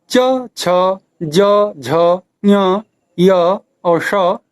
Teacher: दूसरा जो तालव्य वर्ण है, इसका उच्चारण स्थान तालु है। इसमें ई स्वर तथा च, छ, ज, झ, ञ, य और श व्यंजन उच्चरित होते हैं।